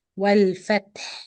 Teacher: The ta sakin here has hams, means you blow air. Then the ha, you do it with sukun, that means you pronounce it with rakhawa timing.